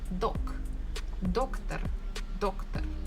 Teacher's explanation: I can hear that stress falls on the first syllable